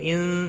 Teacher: ان نون ساکن کے بعد حروف اکفا کا سین آیا ہے، اخفاء حقیقی ہوگا، گنہ کے ساتھ پڑھیں گے